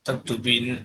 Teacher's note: After omitting na from taktubina and adding na, we get taktubinna. Here also the long vowel is followed by a vowelless letter and so it is shortened. The result is taktubinna.